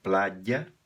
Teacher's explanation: Aqui esse Y tem o som de consoante. Você faz um I pressionando a língua no céu da boca e depois solta a outra vogal